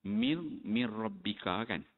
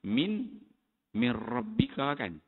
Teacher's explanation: Kemudian lagi idgham nun sakinah. Idgham nun sakinah dan nun tanwin pada lam, pada ra dan juga lam. Dia sebut idgham bila gunnah.